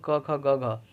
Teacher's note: घ का उच्चारण स्थान हो जाएगा कंठ